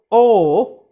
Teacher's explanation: it is between half close and half open, or we can say it is just above the half open position. So o again is a rounded vowel, so rounded just above half open back vowel.